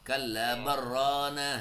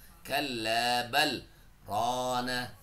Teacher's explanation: Nah, itu dia berhenti tapi enggak enggak narik napas gitu karena berhenti sejenak biar putus dan pisah suaranya dengan tanpa berganti nafas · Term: sakat